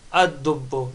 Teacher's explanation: becomes ad, not al, because lam is not pronounced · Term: sun letter